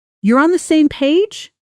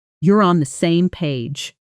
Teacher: And one more important pattern, question intonation. Notice how a genuine yes or no question rises in pitch at the end, while a statement, even one phrased with hesitation, tends to fall